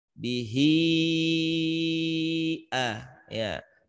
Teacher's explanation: maka cara bacaannya di bihi itu bukan lagi 2 harokat, tapi dibaca panjang, ya. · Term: mad silah tawilah